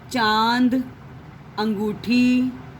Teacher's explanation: अनुनासिक बोलने के लिए मुंह व नाक दोनों से इसका उच्चारण निकलता है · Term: अनुनासिक स्वर